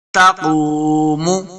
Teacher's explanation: قاف حروف مستعلیہ سے اس کو موٹا پڑھنا ہے، قاف پیش واو، اور واو مدہ بھی ہے، اس کو دو حرکات لمبا کریں گے۔